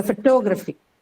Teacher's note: In the initial word, in the base word, root word photograph, it was in the first syllable, the stress was in the first syllable. You added the suffix Y to it, the stress is now changed to the second syllable, which is to.